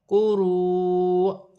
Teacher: حمزہ ساکن ہونے کی صورت میں، واو کی صورت میں حمزہ پر جھٹکا دیا جائے گا